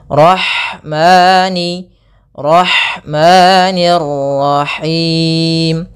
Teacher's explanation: Kemudian ada lafal ha, alirkan nafasnya pada lafal ha karena di sini ada hukum tajwid berupa ada sifat huruf ha yang itu sifat hamas, mengalirnya nafas